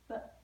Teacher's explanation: word the letter B it's not B it's very specifically B you cannot add that extra H sound to the end of it